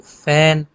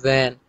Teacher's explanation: जैसे फ और व जो है, फ व आपको पता है दोनों लेबियोडेंटल साउंड है